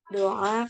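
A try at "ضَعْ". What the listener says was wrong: Bukan doa saja. Ainnya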